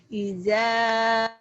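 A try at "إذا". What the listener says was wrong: Jangan ija, ilda, ilda, ilda, ilda agak keras ya. Jangan ija, ilda.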